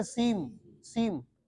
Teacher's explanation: مد بھی ہوگا اور اس پر غنہ بھی کریں گے